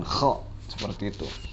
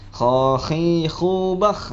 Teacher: Jadi kha letak keluar suaranya yaitu ada di tenggorokan. · Nah, jadi anak-anak juga harus diperhatikan bagaimana makharijul huruf, mengeluarkan huruf kha itu harus di kerongkongan, di tenggorokan